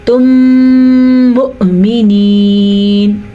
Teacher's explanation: پھر سن لے نون اخفاء کے ساتھ اور ساتھ غنے کے ساتھ. تم مؤمنین غنہ اور پھر حمزہ کو واضح کر کے پڑھنا ہے · ان دونوں کو ملا کے غنے کے ساتھ پڑھیں گے تو اس کو ادغام شفوی کہتے ہیں. حمزہ کے اوپر ساکن ہے, جھٹکا ہوگا